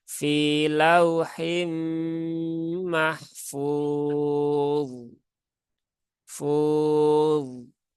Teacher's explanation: dia termasuk huruf yang tebal maka ketika mensukunkan huruf d itu ya pangkalnya sudah dinaikkan